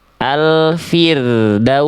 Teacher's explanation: ro sukun di sini sebelumnya kasroh, maka ro sukunnya dibaca tipis. Pangkal lidahnya nggak perlu naik.